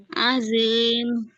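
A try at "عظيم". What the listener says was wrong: Masih kurang tebal. Azim, uzli, kayak gitu.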